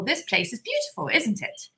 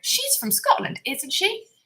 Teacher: our intonation will go up at the end when we want to check the information